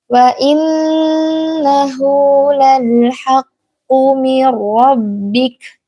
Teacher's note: Dalam kata wa innahu ini ditahan karena ia adalah gunnah, dia dengung.